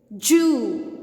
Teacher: most of the indians pronounce this sound as ja we tend to say it ju instead of zoo